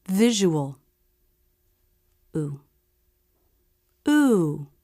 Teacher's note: for the oo vowel the lips do still come into a tight Circle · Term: oo vowel unstressed